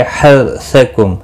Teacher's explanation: रौ साकिन से पहले जबर है इसलिए पुर पढ़ा जाएगा रौ साकिन